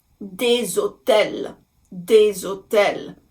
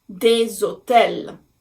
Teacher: Now again, same thing, because the letter H in French is silent, we look at the next letter, and the O is a vowel. So even though it has accent circonflexe, the little hat on top of the O, we are still making the liaison.